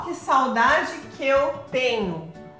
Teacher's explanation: quando a gente tem um terminando com uma vogal aqui e o outro começa com uma vogal, especialmente se é a mesma vogal, a gente junta os dois, então fica uma sílaba poética só na hora que você vai pronunciar.